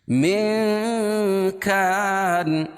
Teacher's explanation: اخفاء حقیقی ہوگا، اس میں ناک میں آواز کو چھپا کر پڑھیں گے